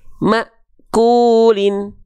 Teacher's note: Maknya terhentak karena berjumpa dengan sifat syiddah pada hamzah sukun.